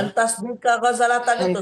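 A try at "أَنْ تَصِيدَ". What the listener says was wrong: Antasida, bukan antas. Antasida.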